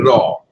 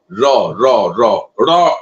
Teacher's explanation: র হচ্ছে দন্তমূলে যাবে জীব গিয়ে তার সামান্য উপরে উঠে উচ্চারণ করবে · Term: দন্তমূলীয় বর্ণ